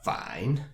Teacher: it's better to think of the third tone as a deep, low tone. Without a syllable, the third tone almost sounds like a grumble, like a deep down in the throat.